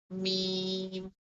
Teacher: پہلے ہمارے دونوں جو باہر کا جو ہونٹ ہیں، جو ہمارے خشک حصہ ہے، پہلے وہ آپس میں ملے گا، آواز میم کی نکلے گی، اور اس کے بعد ہم اس آواز کو ناک کے اندر لے کر جائیں · دونوں ہونٹوں کی بیرونی تری، یعنی خشک حصہ جب آپس میں ملے گا تو لفظ میم ادا ہوگا